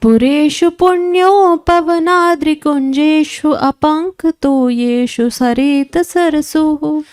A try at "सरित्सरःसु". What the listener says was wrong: सरित्सरहसु होगा, हलंत लगा हुआ, ध्यान दीजिएगा। पुरेषु पुण्योपवनाद्रिकुञ्जेषु अपङ्कतो येषु सरित्सरहसु। पुरेषु पुण्योपवनाद्रिकुञ्जेषु अपङ्कतो येषु सरित्सरहसु। पुरेषु पुण्योपवनाद्रिकुञ्जेषु अपङ्कतो येषु सरित्सरहसु।